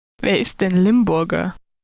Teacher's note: both targets within this bitonal pitch accent are actually aligned within the same syllable